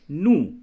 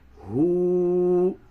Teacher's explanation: پیش کو جلدی پڑھتے ہیں اور الٹا پیش کو حروف مدہ واو کی طرح کھینچ کر پڑھتے ہیں